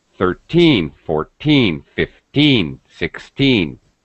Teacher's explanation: the word stress is on teen 13. It's higher pitch. It's stretched. It's a little longer sound.